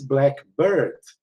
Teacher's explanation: if you stress it like this, blackbird, primary stress is on bird